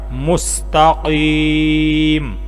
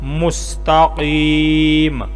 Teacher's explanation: آگے چونکہ وقف ہے، پکا وقف ہے، تو میم پھر ساکن ہو جائے گی، تو پھر پڑھا جائے گا مستقیم۔